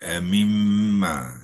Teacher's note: Kita baca dia a dengan dengung dua harakat ya. Diikuti mim tadi apabila diidgamkan maka dia perlu dituliskan dengan tanda tasydid.